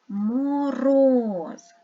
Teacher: два склади тому що два голосних звука подумайте який склад наголошений наголошений є другий склад